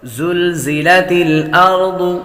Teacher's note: زلزلت زا حروف صفیریہ میں سے ہے، سیٹی کی آواز آئے گی۔ زلزلت الارض، ارض ضاد حروف مصالحہ میں سے ہے، اس لیے اس کو پر پڑھیں گے۔